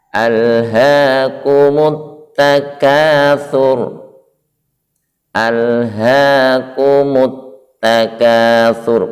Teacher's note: Perhatikan sebelum huruf ta ada huruf alif lam, maka suara alif lam dileburkan sehingga suara masuk atau diidghamkan ke dalam huruf syamsiah itu, maka langsung masuk ke huruf ta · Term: hukum lam ta'rif